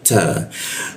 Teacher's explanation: ta ada sedikit desisan ya, bocor tipis, menggunakan ujung lidah ditempelkan ke gigi dia.